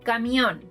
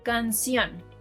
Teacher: It depends on which is the syllable stressed. Las palabras agudas stress the last syllable · These two words end with an and the last syllable is being stressed. If we were to stress the first syllable, these words would no longer be palabras agudas.